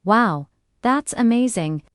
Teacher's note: Rising falling. For surprise or strong opinion